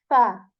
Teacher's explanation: fa is articulated when we place the you know tip of our upper teeth onto the lower lips and you know air comes out of our mouth when we